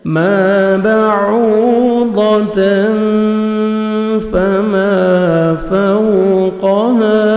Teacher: واو لین ہے، لپس کو راؤنڈ میں لے کے جانا ہے تاکہ واو اچھی طرح ادا ہو